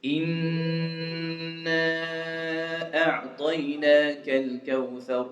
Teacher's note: Noon with the shadda on top, you have to nasalize, make ghunna